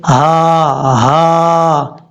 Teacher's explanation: और उस हल्क से अदा होती है जिस हल्क का ताल्लुक सीने से है